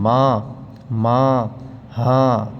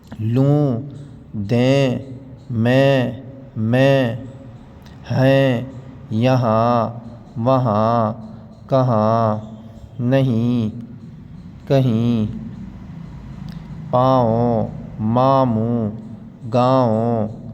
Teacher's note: نون غنہ ہوتا ہے، یہ اس کی آواز ناک میں جائے گی